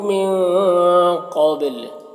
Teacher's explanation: یہاں پر نون ساکن کے بعد قاف ہے تو نون میں اخفا ہوگا، نون کی آواز کو ناک میں چھپا کر پڑھیں گے۔